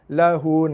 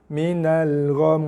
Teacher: Yang pertama, kita waqaf pada nun dan mim bersabdu, kena dengung.